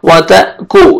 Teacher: ता झटके से पढ़ेंगे जब भी हमजा को सुकून आएगा।